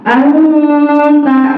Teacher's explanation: Nah, bacanya jangan jelas lagi nunnya ya, jangan anta. Tapi kita samarkan nunnya ke huruf ta. Anta, letakkan lidah agak ke gigi atas.